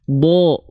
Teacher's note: Huruf dhad itu termasuk ke dalam huruf yang tebal. Ketika huruf dhad dia berharokat fathah, maka dia dibaca akan terdengar condong pada vokal O, kan bukan da, tapi bo. · Huruf tebal itu akan terdengar condong bukan pada vokal A, tapi seperti vokal O